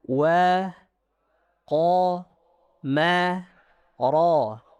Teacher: Perhatikan wa, qa, ma, ra. Tipis tebal, tipis tebal. Jangan waqamara, waqamara.